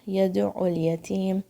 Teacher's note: میم کے مخرج پہ یہاں پہ اپنے لپس کو جوائن کرنا ہے، کوئی غنہ نہیں کرنا ہے، ساؤنڈ کو بہت لمبا نہیں کھینچنا ہے، اور جھٹکے سے بھی نہیں اس کو اینڈ کرنا ہے.